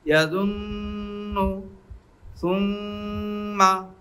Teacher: নুনের উপরে তাসদিদ থাকলে একালিফ পরিমাণ গুণনা করে পড়তে হয় আর মিমের উপরে তাসদিদ থাকলে একালিফ পরিমাণ গুণনা করে পড়তে হয়